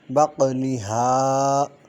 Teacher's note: من بقلہا میں نون ساکن کے بعد حرف با آ رہا ہے، انقلاب ہوگا بقلہا، بق میں قاف میں قلقلہ ہوگا، ہا الف مدہ ہے